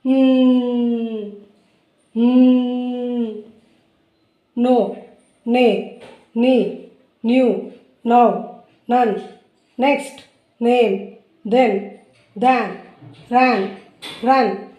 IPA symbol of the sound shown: n